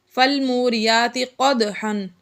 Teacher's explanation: یہاں پر دال آ گیا حروف قلقلہ میں سے اور یہ ساکن ہے، اس لیے قلقلہ ہم نے اس میں ظاہر کر کے پڑھا۔ تنوین کے بعد آگے پھر سے فا آ گیا تو یہ بھی حروف اخفا میں سے، اس لیے یہاں پر بھی اخفا کا قاعدہ جاری ہوا، یعنی غنہ کر کے پڑھا۔